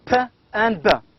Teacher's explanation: these sounds are produced with the help of two lips, and the airstream is blocked and then released · these two sounds are bilabial stop sounds